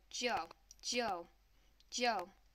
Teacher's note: this one is pronounced like the name Joe except for you're going to apply the fourth downward tone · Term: 4th downward tone